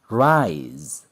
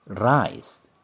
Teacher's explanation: Kedua kata ini berbeda maknanya hanya karena suara Z dan S. Ini voiced dan ini voiceless.